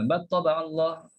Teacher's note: cepat sangat, battaba'allah, seolah-olah lam tu jadi hilang